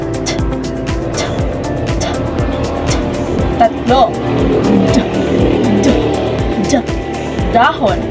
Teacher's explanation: Ngipin. Ang dulong dila ay dumidikit sa loob ng mga ngipin sa bahaging itaas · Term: pangipin